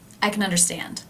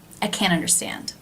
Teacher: The vowel sound is different because in the first sentence it's being reduced to the schwa.